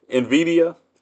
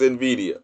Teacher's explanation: it's no vowel between the N and the V, so it's Nvidia